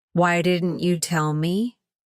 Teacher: Anger tone, loud, clipped with abrupt pauses.